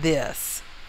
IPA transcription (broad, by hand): dIs